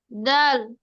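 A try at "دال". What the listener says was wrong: দাল টেনে পড়তে হবে, মাশাআল্লাহ।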